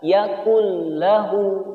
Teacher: Yakul lahu atau yakun lahu, ini tidak boleh. Tapi cara membacanya adalah yakul lahu, nun sukunnya tidak terlihat atau tidak terbaca. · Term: idgham bila gunnah